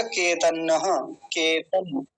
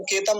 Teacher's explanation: अगर आगे नकार आ रहा है तो इसी के साथ मिलाएंगे अनुस्वार को